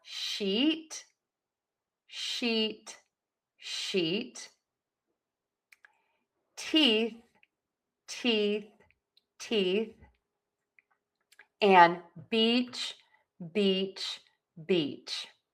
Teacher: that long E sound. So smile for these, nice and high and flat, E, E, E. So let's practice the words.